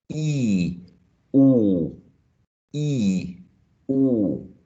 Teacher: Those two sounds are produced with the tongue being up, being high. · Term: high vowel sounds